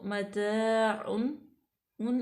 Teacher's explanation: तो मताउन उन इसलिए क्योंकि नून साकिन के बाद हमज़ा आ गया हरूफ हल्की में से, तो यहाँ पे हम ज़ाहिर करेंगे, यहाँ पे कोई गुन्ना नहीं करेंगे